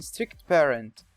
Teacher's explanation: The first consonant is formed and held for longer than usual. The second consonant disappears altogether. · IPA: /strɪkt peərənt/